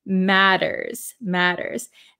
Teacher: These T's are a flap T in American English. So it sounds like a D sound.